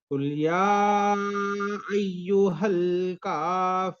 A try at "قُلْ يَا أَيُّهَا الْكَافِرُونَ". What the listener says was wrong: लाम पे इतना वजन नहीं देना है قل يا أيها الكافرون